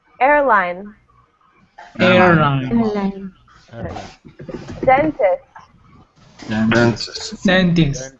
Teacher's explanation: the stress on all of these words is on the first syllable, right?